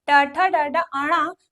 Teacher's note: ट ठ ड ड ण मूर्धा से बोलते हैं।